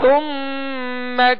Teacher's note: سا کو نرمی کے ساتھ پڑھیں گے، اس میں سیٹی کی آواز بالکل پیدا نہ ہو